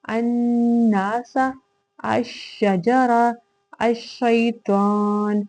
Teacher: ال کو نہیں پڑھیں گے، ال کی آواز نہیں پرومیننٹ ہوگی، اسی وجہ سے اس کو لام تعریف ادغام شمسی کہا جاتا ہے۔